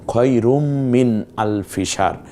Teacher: খয়রুম, এখানে রু থেকে মিমে চলে গেছি আমরা, তার কারণ রুন বলা যাচ্ছে না